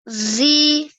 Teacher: We have to make the dal here, we have to make it 2 seconds long because this is the ya madhiya rule